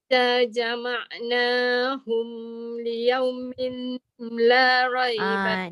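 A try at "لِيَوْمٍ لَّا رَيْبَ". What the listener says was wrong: Dia jangan mim lah. Dia masuk lam terus. Liyaumillah.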